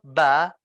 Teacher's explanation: Kalau kita bilang huruf ba, maka dari itu bibir kita diadu antara bibir atas dengan bibir bawah. Sehingga mengeluarkan suara ba. Ini melibatkan bibir.